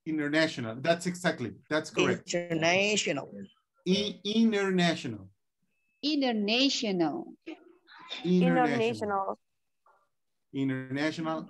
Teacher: N and T. We have to omit the T. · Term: no T sound